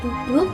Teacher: di dan n pada minta berikutnya yaitu bunyi apiko alveolar dunia dihasilkan oleh keterlibatan ujung lidah dan gusi atas